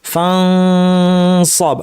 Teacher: আচ্ছা, সাদের ক্ষেত্রে দেখেন সাদ আর সিনের মাখরাজ একই, জিহ্বার শীর্ষ নিচের পাটির দাঁতের গোড়ায় লাগিয়ে অথবা কাছাকাছি নিয়ে নাক থেকে গুন্না করবো, কিন্তু সাদ হচ্ছে ভারী হরফ, ফলে গুন্নাটাও ভারী হবে